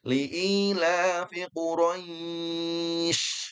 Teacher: Kemudian yang kita fokuskan adalah huruf syin. Huruf syin dia dari segi sifat punya sifat yang sering kita ulang namanya tafasi. Tafasyi artinya menyebar ya. Kemudian i royis ini dalam hukum tajwid namanya mad lin atau mad layin yang mana betul i ya rois bukan rais.